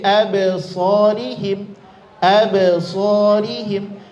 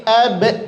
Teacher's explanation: Ba, makhrajnya adalah di bibir syafatain. Maka cukup di bibir saja pantulannya. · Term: qalqalah